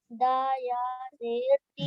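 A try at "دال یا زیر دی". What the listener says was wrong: दा नहीं, दाल पूरा हर्फ बोलते हैं। जब हिज्जे करते हैं तो हर्फ पूरा बोलेंगे, दाल या जेर दी।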